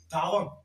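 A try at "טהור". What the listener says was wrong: Non, il a pris encore O ici.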